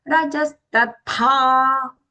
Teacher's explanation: tha long and mahaprana